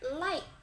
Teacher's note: Cara pengucapannya, ujung lidah ke gusi dan pita suara bergetar